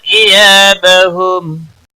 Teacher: या अलिफ मद्दा है 1 अलिफ के बराबर खींच कर पढ़ेंगे। बहुम मीम साकिन ही रहेगा वक़फ़ की सूरत में।